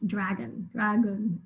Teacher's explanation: I hear the schwa, the second syllable there, and it's spelled with the letter O in this case.